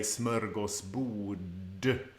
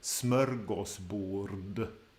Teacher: the RD at the end becomes joined up to that slightly back in the mouth d sound, tip of the tongue slightly further back